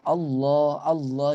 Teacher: dhomah maka dibacanya tafkhim Allah Allah dia lebih beratnya sementara kalau kasrah mudah sekali itu dibacanya dengan tarqiq atau tipis